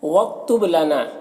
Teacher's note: وَاکْتُبْ لَنَا، یہ کاف ساکن حرف ہے تو پیچھے والے متحرک حرف واو سے مل کر پڑھا جائے گا۔ با حروف قلقلہ میں سے ہے اور اس پر جزم بھی ہے تو با میں قلقلہ ہوگا۔ لنا میں الف سے پہلے نون کے اوپر زبر ہے تو الف مدہ ہوگا، اسے ایک الف کے برابر کھینچ کر پڑھیں گے۔